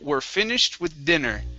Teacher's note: the sh is an unvoiced sound so the Ed will be a t sound